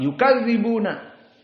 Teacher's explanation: Perhatian, yukadzibuna, za di sini rokhawah. Yang salah dibaca dengan cepat.